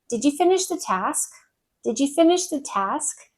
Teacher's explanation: So that's a rising intonation for a yes or no question.